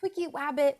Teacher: he would use his r's he would replace it with a w